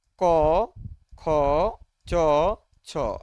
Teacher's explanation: আমাদের যে vocal কোড, এটা অনুরণিত হয় না, সেটা কাঁপে না, সেটা হচ্ছে আমাদের অঘোষ ধ্বনি।